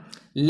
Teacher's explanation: ले भी आपका वत्सरी वर्ग का है और इसका उच्चारण स्थान दंतमूल या मसूड़ा है।